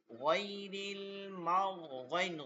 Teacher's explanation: গইনের উচ্চারণটা হবে হলকের শেষ থেকে